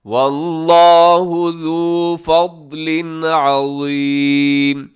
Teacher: فضلن کے نیچے تنوین ہے، تنوین کے بعد عین ہے، یہاں آپ اظہار کریں گے